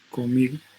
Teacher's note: inicialmente tiene que ser el sonido alveolar, pero se va a bilabializar, ¿no? ¿Por qué? Porque siguen sonidos bilabiales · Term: nasal bilabial